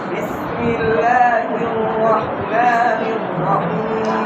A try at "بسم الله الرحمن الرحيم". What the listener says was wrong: এখন লা কম হয়েছে, মা বেশি হয়েছে, বুঝতে পারছেন? দুটোটা টান সমান রাখতে হবে। বিসমিল্লাহির রহমানির রহিম।